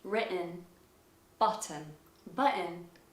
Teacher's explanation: sometimes if there is a double T, the T might actually be glottalized in American.